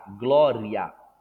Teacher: estamos indo da semivogal e para vogal a então é um ditongo crescente